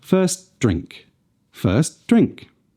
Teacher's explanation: There should be a slight almost imperceptible hold between the two words. Without this, the final sound of the first word gets lost.